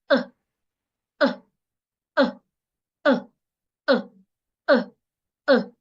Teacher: if you watch very well, you realize that my vocal cord vibrates. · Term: weak sound